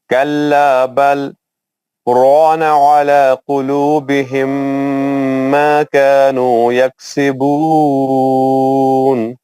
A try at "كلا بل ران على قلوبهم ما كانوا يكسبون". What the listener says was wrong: ماشاء اللہ ماشاء اللہ.